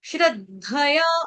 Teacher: आघात आ जाएगा द का श्र के ऊपर